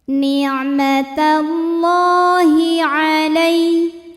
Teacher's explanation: ada baris fathah panjang di atas huruf lam. Cara bacanya panjang 2 harokat. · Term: matobi'i muqaddar